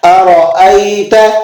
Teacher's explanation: اگلی آیت دیکھ لیں، ارأیت ان کان علی الہدی، ارأیت ان کان علی الہدی، لفظ کیا ہے، ارأیت، ٹھیک ہے، ارأیت، حمزہ یا زبر ای، تو یہ یا ساکن ہے، اس سے ما قبل میں زبر ہے تو یہ یا مدہ کہلائے گی، اسے اس لیے ایک الف کے برابر ہم کھینچ کر ادا کر رہے ہیں